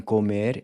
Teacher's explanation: The O in comer is pronounced with a closed O, which is like the O in the English word cold.